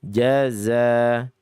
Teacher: Jaza, bukan dibaca dalam keadaan hams, tapi dalam keadaan jahar. Jaza, dia zayyun, letak hurufnya ada di ujung lidah, bersandingan dengan sa sama sa, za sama sa.